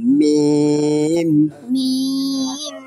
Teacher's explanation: দুই ঠোঁটের শুকনো অংশ থেকে উচ্চারিত হয় মিম